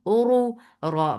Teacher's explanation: ra is heavy here because it has dhamma